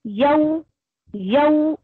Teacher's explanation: आपके लिप्स वाव पर गोल होने चाहिए